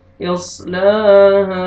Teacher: الف پہلے فتحہ، ہا کو ہم نے کھینچنا ہے. اوپر مد جائز ہے، 3 سے 4 الف کے برابر آپ نے ایکسٹرا کھینچنا ہے.